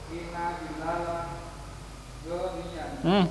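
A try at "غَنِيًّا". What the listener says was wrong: Gonya pendek. Inna bilalan. Goni. Goniyun apa gonian? Bilalan sebagai apa? Inna bilalan goniyun. Bilalan posisinya sebagai apa? Isim inna. Goniyun.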